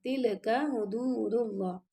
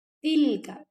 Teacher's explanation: تلک حدود اللہ، اگر آپ پڑھیں گے تل کا حدود اللہ تو یہ آپ کا تل کا یہ کلکلا ہو جائے گا، تو کلکلا نہیں کرنا آپ نے، تا کو باریک پڑھنا